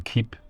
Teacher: the tongue is front in anticipation of that front High vowel